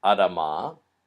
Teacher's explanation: in this case in a suffix which is a feminine suffix the first vowel changes so it becomes much shorter